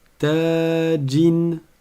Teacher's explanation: On entend le noun à la fin parce que il y a le tanwin, la double voyelle.